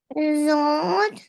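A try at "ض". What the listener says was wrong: You don't pronounce sound of dal in the end of this letter. Got it? Like vod.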